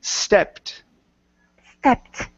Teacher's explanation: instead of saying estepped, take off the e sound